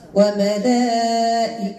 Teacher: وملائكته مد متصل واجب ست حركات